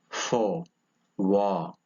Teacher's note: It is a mid-low back tense vowel.